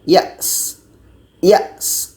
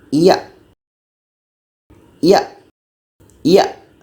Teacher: Hamas itu mengalirkan nafas atau angin Sedangkan syiddah ini suara ada tertahan